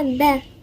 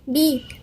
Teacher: الباء المكسورة ما نجيش نقرأها با